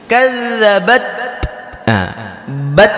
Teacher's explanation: Kadzabat, bat, keluar angin. Jadi huruf ta ini sifat bawaannya itu memiliki angin ketika diucapkan.